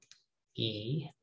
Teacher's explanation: E, high up in the front